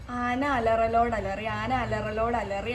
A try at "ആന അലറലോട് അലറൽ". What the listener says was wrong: അലറിയല്ല, ആന അലറലോട് അലറൽ.